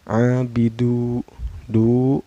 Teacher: Abidu, du, sama ini hukumnya mad tabi'i ya, karena ada waw sukun sebelumnya berbaris domah ya. Cara bacanya dipanjangkan 2 harkat.